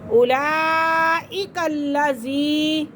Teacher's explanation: لام مشدد حرف اپنے پہلے والے حرف کے ساتھ مل کر پڑھا جاتا ہے